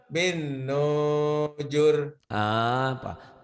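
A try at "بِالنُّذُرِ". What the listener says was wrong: nggak tahu panjang pendek nih. bin nudur? panjang tuh. Bin nudur.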